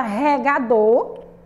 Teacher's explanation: Ela é um oxítona porque a sílaba mais forte dessa palavra é o do, tá bom? É a última sílaba.